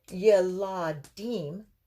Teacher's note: yeladim, with the accent on the end again